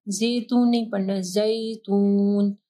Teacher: پھر یا ساکن ہے، ٹھیک ہے، اس سے پہلے جو ہے زا کے اوپر زبر ہے تو مدلین آ رہا ہے